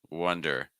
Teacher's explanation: That O is making a schwa sound, so we're wonder.